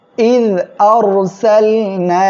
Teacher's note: এক আলিফ মদ, এরপরে যখন পৃথক শব্দের শুরুতে হামজা আসবে তখন মধ্যে মুনফাসিল হবে, 3 আলিফ টেনে পড়তে হবে